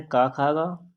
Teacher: तो इसका दोस्तों राइट आंसर आपका हो जाएगा कंठ है, तो ये का वर्ग जो है ये आपके कंठ में आते हैं। का वर्ग जो होती है कंठ ध्वनियाँ होती हैं